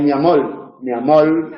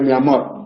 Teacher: la vibrante cuando se debilita y se convierte en lateral